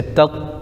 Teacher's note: تا پر زبر لیکن طا پر تشدید ہے تو تا کو طا میں ملائیں گے ، جیسے تت، پھر طا پر زبر طا، تت، طا، لام